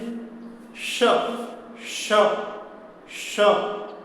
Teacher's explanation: जीभ का मध्य भाग तालु को हल्का स्पर्श करता है और कंठ से जो हवा आती है वह हवा पहले तालु और जीभ में टकराती है, फिर मूर्धा में, फिर दंत में टकराते हुए वो घर्षण होते हुए उसमें ऊष्मा पैदा होती है और गर्म गर्म हवा बाहर निकलती है।